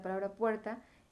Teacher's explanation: tú pronuncias la palabra puerta y está suave la terminación ta puer es más fuerte de hecho probablemente sea porque se está uniendo un sonido fuerte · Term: sílaba tónica